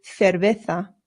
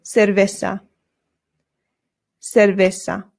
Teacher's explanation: the C's in Spanish make a th sound, but the Z's do as well. So this is cerveza.